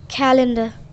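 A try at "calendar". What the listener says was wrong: कैलेंडर आर आर twist नहीं कर रहा कैलेंडर कैलेंडर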